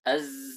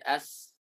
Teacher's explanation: Yang bedakannya adalah zai sifatnya adalah aljahar. Jahr tekanannya kuat. Sedangkan sin sifatnya hams. Hams itu lemah. Tidak ada tekanan sama sekali.